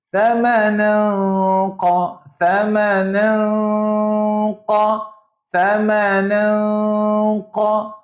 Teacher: Mulut nak pergi pada qaf. Sebab sebenarnya memang nak sebut huruf qaf tapi disamarkan. Itu nama dia ikhfa.